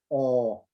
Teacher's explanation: quite similar to the Spanish O, but O, and notice that it's longer. Okay, so the double colon there again represents the vowel length.